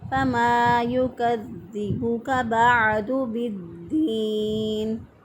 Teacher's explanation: عین جو ہے اس کو وسط حلق سے ادا کریں گے، گلے کے درمیان سے عین کو ادا کیا